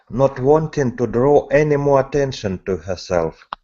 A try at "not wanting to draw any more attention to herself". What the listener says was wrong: Now, you think that you're opening it? Open it wider.